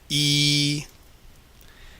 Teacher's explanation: Make your mouth as close as possible. So your tongue is up, and your tongue is as far forward as you can go while still keeping your mouth open. And you end up with the sound E.